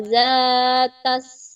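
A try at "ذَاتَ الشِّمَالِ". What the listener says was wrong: maksudnya dibaca bukan tas. Wazatash simal, wazatash itu sin bukan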